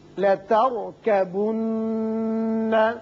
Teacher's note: یہ را ساکن جو ہے پر پڑھیں گے اس لیے کہ اس سے پچھلے حرف کے اوپر زبر ہے اور نون مشدد ہے، اس کو غنہ کریں گے.